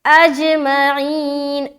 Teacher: قلقلہ کریں گے، کیونکہ جیم حروف قلقلہ میں سے ایک ہے، لہٰذا جب ہم حمزہ کو جیم سے ملائیں گے ہماری آواز ٹکرا کر ہماری ہی طرف واپس آئے گی، جو کہلاتی ہے قلقلہ کرنا